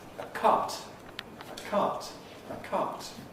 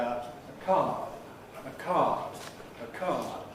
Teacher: Open vowels like R are pretty long under all circumstances, but before the T of cart, it is clipped